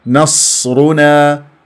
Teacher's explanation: راء مفخمه لانها مضمومه